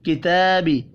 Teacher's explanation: تا کے اوپر کھڑی زبر ہے، ایک الف کے برابر کھینچ کر پڑھنا ہے